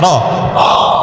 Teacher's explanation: রটা মানে যখন সিঙ্গেল উচ্চারণ করবেন এটা যেন টাস টাস করে বাড়ি দেয়